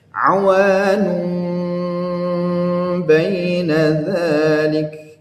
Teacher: Awanun baina dzalik, maka di situ diiqlabkan ya. Jadi bunyinya itu mengarah ke bunyi mim ketika dia mendengungkan ya, hukum bacaan iqlab ini.